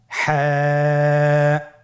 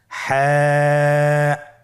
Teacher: হা হরফটি উচ্চারিত হবে কণ্ঠনালীর মধ্যখান হতে। গলা চিপে ধরে আপনি উচ্চারণ করুন।